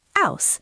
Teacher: drops H's, so house sounds like ouse